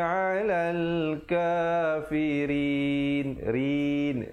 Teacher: ra di situ menjadi nipis dan diwaqafkan dengan 2, 4 ataupun 6 harakat. Hukumnya mad arid li sukun.